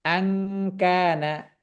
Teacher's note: জিহবার গোড়াটাকে উপরের দিকে কাফের মাখরাজের দিকে তুলে রাখা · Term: ইখফা